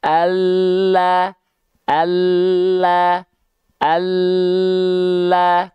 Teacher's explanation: tepi lidah bagian depan yang kanan, dan tepi lidah bagian depan yang kiri, keduanya menyusur sampai ke ujung lidah, disentuhkan ke arah langit-langit. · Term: huruf lam